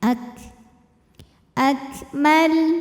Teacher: Keluar udaranya. Ak untuk kafnya yang sukun, udaranya keluar setelah suaranya.